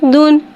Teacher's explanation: दाल पे दो पेश है, दो पेश को होठों की गुलाई के साथ अदा करके पढ़ेंगे। दाल दो पेश दुन, दन, दिन, दुन।